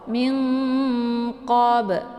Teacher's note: Jadi cara bacanya itu disamarkan bunyi nunnya, kemudian ditahan suaranya, siap-siap masuk ke huruf qaf. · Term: ikhfa